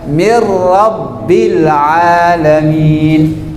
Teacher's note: huruf nun tidak lagi dibaca tetapi dilanjutkan dengan huruf setelahnya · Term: Idgham bilaguna